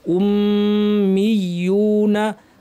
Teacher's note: মিমের উপর তাশদিদ লম্বা গুন্না